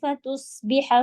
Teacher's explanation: تصبح صاد heavy ہوگا، حا حلق سے پڑھیں گے